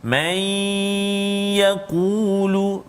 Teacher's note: nun mati ke dalam ya, idgham al-ghunnah